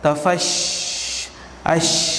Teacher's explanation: Semasa kita menyebut hurufnya, berhamburan angin antara gigi depan dan langit-langit keras. Maksudnya angin tu dia berlegar-legarlah di gigi depan kita, antara gigi depan atas dan bawah, dan langit keras. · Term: tafashi